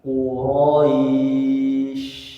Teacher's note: kemudian shinnya alirkan karena shin itu punya sifat dia hamas, mengalir nafasnya. Rokhawah, dia mengalir suaranya.